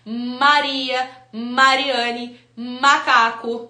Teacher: eu vou juntar meus dois lábios eu vou ter uma formação de um som a partir de uma articulação de um ponto de articulação bilabial